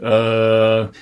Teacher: to be closer to the perimeter of the space so if schwa is kind of the ultimate lax vowel you're putting like no effort into it at all by just kind of using your default you know speech position